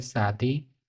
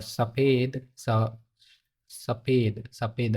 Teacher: शादी, तो इसमें शादी हवा बाहर निकल रही है। और सफ़ेद, सफ़ेद, सफ़ेद हवा नहीं निकलनी चाहिए इसको बोलते समय। तो यह स, ये वाला स और इस स के उच्चारण पे आपको ध्यान देना है।